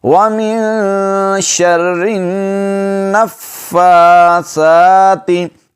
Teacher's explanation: سیٹی کی آواز نہیں آئے گی سا پر، سا نرمی کے ساتھ ادا کریں گے، زبان کی نوک سامنے والے دونوں دانتوں کے اندر والے کناروں سے لگے گی